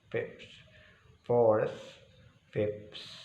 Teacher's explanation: bunyi sa dalam bahasa Arab ya. A, ba, ta, sa. Dengan ujung lidah ketemu dengan gigi atas ya.